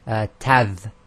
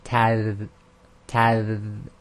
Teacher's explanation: when the dal is sakin, you must not have the th at the end. You can't say tadh.